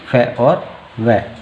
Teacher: दंतोष्ठ्य से उच्चारित होने वाले व्यंजन, दंतोष्ठ्य यानी कि जिसमें दंत दांतों का और ओष्ठ का प्रयोग होता है